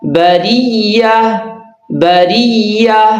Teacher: اس را کو باریک کرنا ہے اس لیے کہ اس کے نیچے زیر ہے